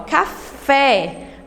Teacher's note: a sílaba acentuada, o fé, ela é a mais forte nessas palavras